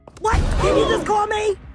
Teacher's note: the vocal fry actually does make her sound like an old person